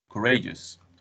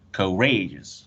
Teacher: And the stress syllable, it's in the second one. It's the second syllable.